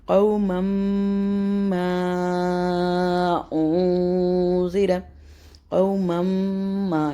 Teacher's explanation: نون مشدد میم مشدد بنے گا اور اس کے اوپر نیزل ساؤنڈ ہوگا یعنی کہ غنہ ہوگا. تو یہاں پہ غنہ کریں گے.